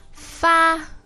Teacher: the verb to send the email is far and that's first tone